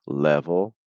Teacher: So you can say level. That's with a light L, my tongue high for both